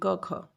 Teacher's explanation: जब हम इनका उच्चारण करते हैं ना तो आसानी से हो जाता है, कंपन उत्पन्न नहीं होती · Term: अघोष